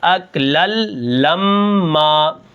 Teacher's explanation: اب یہاں پر دیکھیں اصل میں تو اکلن لما ہے، لیکن یہاں پر میں کیا کروں گا، اس لام کو اس لام کے ساتھ ملا دوں گا، جس کے اندر وہ نون کی آواز پیدا ہوتی ہے، جو نون تنوین ہوتی ہے وہ غائب ہو جائے گی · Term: ادغام